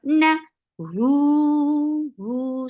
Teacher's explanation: circle your lips and make it 2 counts long